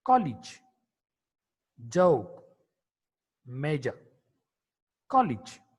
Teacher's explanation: J is a voiced palato-alveolar affricate consonant.